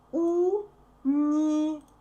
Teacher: We write go, but we say во.